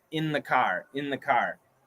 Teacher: And in the car, the N can cancel the TH.